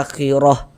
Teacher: Misalnya nih kita berwakaf di huruf H ini di mad silah ini, maka ini kita baca akhirah. Gugur tanda panjangnya pendek. Jadinya huruf H-nya kita sukunkan. Tapi kalau misalkan kita tidak berwakaf di huruf H baru berlaku tanda panjangnya.